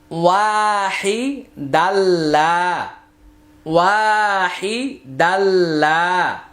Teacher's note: তানউইনের পরে লাম আসছে ইদগামি বিলা গুন্না, আর এই আলিফটা উচ্চারণে আসবে না।